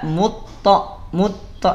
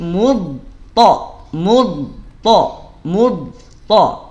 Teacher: sempurnakan dulu dodnya ada di mana di pinggir lidah nempel dengan geraham